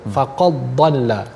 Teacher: Tidak ada mendengar athar dal, tidak mendengar kesan pada huruf dal tersebut. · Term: idgham